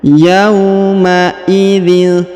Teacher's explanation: Huruf tanwin in bertemu dengan ta, maka didengungkan dan disamarkan